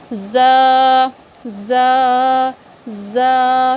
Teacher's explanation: आप अभी रखो अपने दोनों दांतों के जो नीचे वाले जो दोनों दांत हैं आपके, उसके अंदरूनी किनारे में, अंदर से किनारे की तरफ आप ज़ुबान की नोक को टच करो तो वहाँ से ज़ अदा होती है। ये बिल्कुल सीटी की तरह तेज़ आवाज़ होती है।